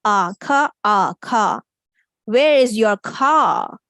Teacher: in British English we don't pronounce the R